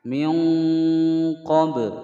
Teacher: ada ba sukun dipantulkan, hukum bacaan qalqalah sughra.